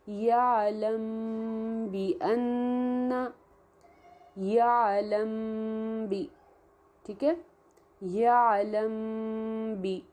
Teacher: ٹھیک ہے، ایسے نرمی کے ساتھ نہیں، کیونکہ جب ہم اخفا کر رہے ہوں گے تو وہ نرمی کے ساتھ ہے، کیونکہ میم ہے تو میم کے لیے ہم نے نرمی کے ساتھ ہونٹوں کو آپس میں ملایا، خشکی والے حصے کو. اور پھر با کے لیے جو ہمارا ہونٹوں کا گیلا حصہ ہوتا ہے اس کو سختی کے ساتھ ملا کر اس کو با کو سختی سے ہم ادا کریں گے